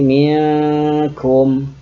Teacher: Cara membacanya adalah dengan menyamarkan bunyi min tadi karena ketemu dengan huruf kaf. Huruf kaf ini huruf qaf merupakan 2 dari 15 huruf-huruf ikhfa.